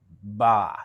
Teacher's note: What happens with ba is your vocal cords start vibrating just before your lips open up. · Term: ba sound